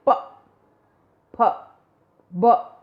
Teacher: जैसे प फ ब बोला ना हमने, तो इसमें वायु का मार्ग कैसे रोका? निचले होठ ने ऊपर के होठ को स्पर्श करके उसका रास्ता, हवा का रास्ता रोक दिया। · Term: पै वर्ग